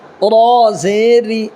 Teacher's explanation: را کو باریک پڑھنا ہے، اس لیے کہ را کے نیچے زیر ہے